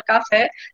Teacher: Aí percebam que na palavra café, a gente sabe que o nome fé, a sílaba fé, é a sílaba mais forte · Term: oxítona